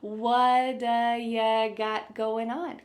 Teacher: That t at the end of the word what is going to change to a d sound. This is really typical of American English where a T that's surrounded by vowel sounds is going to change to a D. It's called a flapped T and it just kind of uh rolls off your tongue in a smooth way.